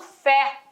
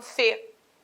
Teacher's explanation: o agudo tônica timbre aberto